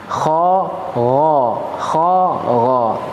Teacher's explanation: Ya, terakhir huruf gha, ya ghain, huruf ghain dan huruf kha. Ya, maka dua huruf ini adalah huruf yang berbeda, gha dan kha. Namun dia punya tempat keluar yang sama-sama di tenggorokan terdekat.